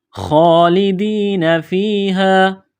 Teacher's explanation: خالدین فیہا، خا کڑا زبر خا، خا کو موٹا کرنا ہے، جس طرح انسان گلے سے بلغم نکالتا ہے خا کو نکالیں گے۔ خا کڑا زبر خا، ایک الف کے لمٹ میں کھینچنا ہے۔ لام زیر لی، دال یا زیر دی، یا ساکن سے پہلے زیر ہے، ایک الف کے لمٹ میں یا کو کھینچنا ہے۔